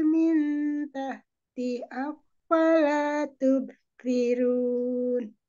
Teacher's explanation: Min tahti ada ya sukun. Jadi panjang dua harokat.